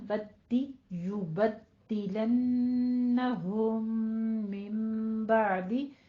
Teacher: نیچے کسرہ ہے، اس کو شارپ کریں، آواز کو باریک کریں